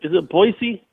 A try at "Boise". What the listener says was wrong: Boise. It's Boise. Yeah, like it's a C, not a Z. It's more of a C than Right. It's like Boise.